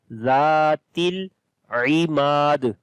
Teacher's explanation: Ain read from the middle of the throat. Mim we long due to alif madda and on the dal we make qalqala.